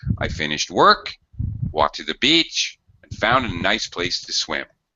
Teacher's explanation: notice that I go up I go up again at the end of the next clause and then I drop down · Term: listing intonation